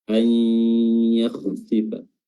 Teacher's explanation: Nah, diperjelas lagi anunya, apanya, gunahnya, umumnya pada lafaz an yakhsifa. Di situ ketika antum menunggu menahan durasi itu, di situ diusahakan sedapat mungkin mengeluarkan dengung dari hidung, sengau